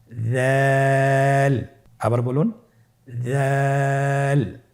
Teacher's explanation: উচ্চারণ করার সময় অবশ্যই 3 আলিফ টেনে পড়তে হবে। দালের মাখরাজ হলো জিহ্বার আগা সামনের উপরের 2 দাঁতের আগার সঙ্গে লাগিয়ে উচ্চারিত হয়